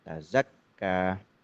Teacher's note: Tertahan kuatnya huruf kaf ini itu memang satu pertanda dari bahwa huruf kaf itu huruf syiddah, huruf yang kuat tertahan. Dan ya, tazakka.